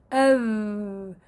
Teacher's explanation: حرف الذال يخرج من طرف اللسان عفوا مع اطراف الثنايا العليا